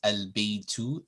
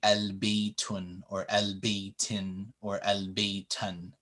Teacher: So it would never be al-baytun or al-baytin or al-baytan. No, that un sound is dropped as soon as alif and lam is connected to the word.